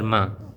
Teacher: ہم آواز کو کریں گے ایک الف کے برابر لمبا اور ناک میں لے کر جائیں گے۔ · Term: غنہ